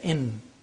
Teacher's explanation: I-N, you say in. The N is pronounced from behind the teeth, ridge